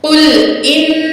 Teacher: नून की आवाज को नाक में छुपा के पढ़ेंगे, क्योंकि काफ जो है हरूफे इख्फा में से है।